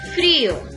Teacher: Pero tiene tilde la I, entonces se separan, porque al ponerle la tilde, esta I también ya tiene una mayor fuerza de voz. Ya no va a ser una vocal débil, ¿verdad?